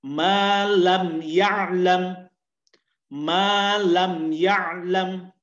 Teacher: Mim sukunnya itu dibaca jelas. Jadi tidak boleh ada dengung. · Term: Al-izhar syafawi